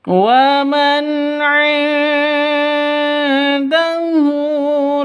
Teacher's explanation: Wa man 'indahu nun mati bertemu dengan dal panjang, nun mati bertemu dengan dal, cara bacanya samar didengungkan, siap-siap ke huruf dalnya karena ikhfa hakiki · nun mati bertemu dengan ain jelas terang karena bacaan izhar halq nun matinya jelas ainnya jelas